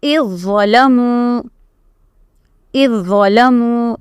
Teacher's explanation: Again idgham mutajanisan, because zal and za articulation point is same but they are two different letters. So you will do the complete idgham of zal into the za. Okay, and you will read only za.